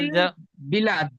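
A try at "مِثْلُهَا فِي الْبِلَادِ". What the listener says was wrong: লাম আলিফ দাল জবর লাদ, ঠিক এমন টান দিয়ে বলেন, বানান সুন্দর হয়েছে, টান দেন। মিসলুহা ফিল বিলাদ।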